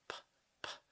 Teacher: That P doesn't really have a voiced sound. There's no vibration. P, p. Nothing moves here.